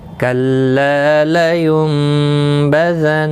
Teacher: نون ساکن کی آواز بدل کر میم میں پڑھنی ہے، اخفا شفوی ہوگا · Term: قلب